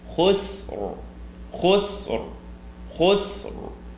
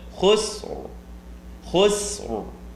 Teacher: There's just a slight r sound, and it is going to be considered heavy.